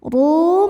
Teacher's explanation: Ru mad thobi'i dzohiri karena ada wawu sukun didahului baris dhommah. Maka huruf ra panjang dua harokat.